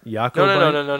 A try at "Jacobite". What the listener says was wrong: You're saying it wrong because it's Scotland and they don't pronounce it like French.